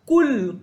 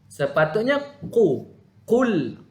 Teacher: Sepatutnya qul. Dia tebalkan sedikit. Qul bukan kul.